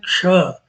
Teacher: अब यहाँ कुछ अक्षर हमारे जो हैं वो संयुक्त व्यंजन है, जैसे दो अ, अक्षरों को मिल के बने हैं, जैसे क और मूर्धन्य श मिलकर के बनता है